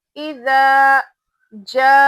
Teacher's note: एक अलिफ के बराबर खींचना है यानी एक हरूफ मदद्दा है तो एक अलिफ के बराबर हम इसको खींचेंगे। · हरूफ मदद्दा के बाद हमजा उसी वर्ड में है उसी कलमे में है तो मद्दे मुत्तसिल होगा तो यहां पे भी हम इसको खींचेंगे ढाई अलिफ तक